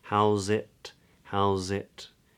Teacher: it's yeah house it it it it house it howls it tip of the tongue comes up for the T on to the what's called the alveolar Ridge the gum Ridge